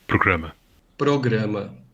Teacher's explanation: note that between vowels, or after a consonant but before a vowel, it's an alveolar tap in both varieties.